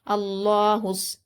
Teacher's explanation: और आगे स्वाद हुरूफ शमसी में से होता है, इसलिए हम अलिफ लाम को नहीं पढ़ेंगे, बल्कि हा को सीधा स्वाद में मिलाएंगे। अल्लाहुस, स्वाद पर हरकत है, मीम पर हरकत है, दाल पर हरकत है, तीनों को जल्द पढ़ेंगे।